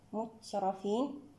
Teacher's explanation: التاء مع حرف الراء هنا تقارب صغير حكمه الإظهار، والراء هنا مفخمة لأنها جاءت مفتوحة. مترفين الراء مع حرف الفاء تقارب كبير حكمه الإظهار. · مترفين الميم مع حرف التاء هنا تباعد مطلق حكمه الإظهار. والتاء هنا بما أنها ساكنة نأتي بصفاتها: شديدة، مهموسة، منفتحة، مستفلة، مسمطة. التاء مع حرف الراء هنا تقارب صغير حكمه الإظهار، والراء هنا مفخمة لأنها جاءت مفتوحة.